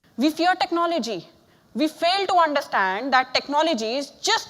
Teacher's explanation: You've got the T sound sounding more like a D sound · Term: Indian accent